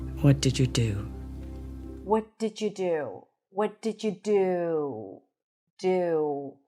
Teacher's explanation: notice how the do is stressed and prolonged because that's a stressed word, right? So, we use pitch, but we also use length.